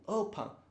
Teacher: a sílaba forte está no o